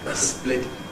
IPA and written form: eˈsplɪt (split)